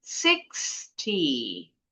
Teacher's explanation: Suku kata pertama, 6. Intonasinya, 6-nya yang tinggi.